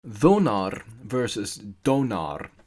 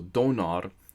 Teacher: the sound th, as in thin in English, became th, as in then in English, and then evolved into a d sound. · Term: voicing